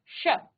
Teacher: ये मूर्धन्य स्व है, मूर्धा को स्पर्श करती है आपकी जीभ। मूर्धन्य, इसको कहा जाता है मूर्धन्य।